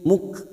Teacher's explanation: huruf kaf sukun yang memiliki sifat hamas, maka harus nampak